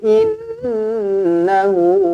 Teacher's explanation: Nun sabdu wajibul gunah dengungkan dua harakat